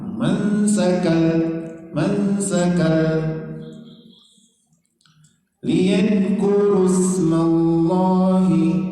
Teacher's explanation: Idgham bila gunnah. Jadi menghilang bunyi n-nya karena dimasukkan ke huruf lam.